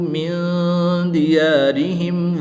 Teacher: نون ساکن کے بعد دال حرف اخفا میں سے ہے تو یہاں پر اخفا ہوگا، یعنی غنہ غمانی کر کے پڑھیں گے۔